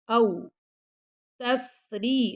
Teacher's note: را کو باریک پڑھنا ہے، تفا پہ ہمس کریں گے، تفریضو ضاد کو موٹا پڑھیں گے اور ساتھ اس کے واو مد ہے تو 2 سیکنڈ تک لمبا بھی کریں گے.